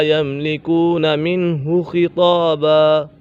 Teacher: خا پر ہے، طا بھی پر ہے، حروف مستعلیہ میں سے ہے تو اسی وجہ سے ان دونوں کو پر پڑھا جائے گا